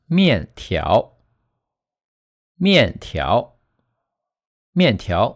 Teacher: It's a fourth tone plus a rising tone. First, you say the fourth tone with a falling pitch. Then, you start from a lower pitch and end at a slightly higher pitch.